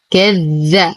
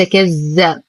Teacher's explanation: نشد الذال وننتبه أنه حرف لثوي